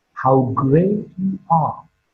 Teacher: Great is marked with a falling tone.